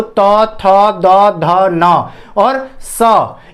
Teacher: इनको बोलते समय हमारी जीवा दांत को स्पर्श करती है। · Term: दंत्य व्यंजन